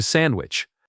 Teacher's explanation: The D in the middle almost disappears in fast speech. It sounds closer to sandwich.